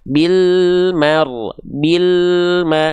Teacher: Alnya terus jalan sedikit karena dia punya sifat tawasud. Bil mar, bil ma, nggak ada jeda hening.